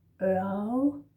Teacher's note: Difficult to say. We don't say the R's in this word. Ørl. So it's more like Ørl.